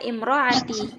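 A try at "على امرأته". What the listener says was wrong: Sambung. Alam ro'atihi. Disambung. Kita misalnya wasol ya.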